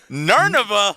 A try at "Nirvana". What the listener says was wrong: It was a mixture of Narnia and Nirvana.